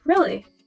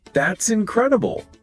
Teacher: Rising falling intonation. Your voice goes up and then back down.